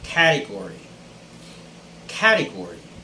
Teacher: so the stress should be on the first syllable and most people in the philippines would pronounce this as category